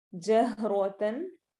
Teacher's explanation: را موٹے حروف میں سے موٹا پڑھا جائے گا یہاں پر